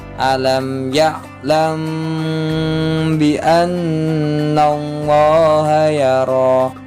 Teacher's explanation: Nah, itu cara bacanya. Jadi kita masuk ke mimnya dulu baru ke dengung lalu masuk ke ba-nya. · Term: ifa syafawi